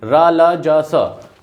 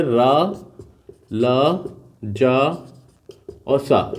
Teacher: दांत के नीचे से बोले जाने वाले वर्ण, मतलब दांतों के निचले भाग से बोले जाने वाले वर्ण को क्या कहते हैं, वत्स्य वर्ण कहते हैं।